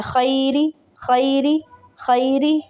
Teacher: یا ساکن سے پہلے زبر ہے، اس کو بغیر لمبا کیے پڑھنا ہے اور جلدی نرمی سے پڑھنا ہے. خیری خیری خیری. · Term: یا لین